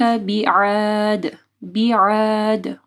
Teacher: عین کو واضح پڑھنا ہے اور دال کے اوپر قلقلہ کرنا ہے